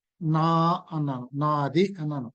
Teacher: ఈ నా అనే అక్షరం దీర్ఘమైంది, అంచేత దీన్ని కూడా దీర్ఘాన్ని కూడా గురువు అన్నారు.